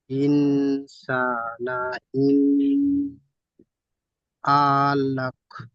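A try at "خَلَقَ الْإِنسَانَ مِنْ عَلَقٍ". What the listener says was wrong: মিন বলে গুন্না করেছেন, নুন সাকিনের পরে হরফে হালকি 6টি অক্ষরের মধ্যে আইন এসেছে, তো নুন সাকিন গুন্না হবে না, এখানে গুন্না করেছেন। তারপরে আলাক বলেছেন, আইনটি টান দিয়েছেন, আইনের উপরে যাবার আছে, টান হবে না, হারাকাত টান হয় না, সংশোধন করে নেবেন।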